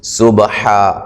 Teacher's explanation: سبحا با پہ قلقلہ کریں گے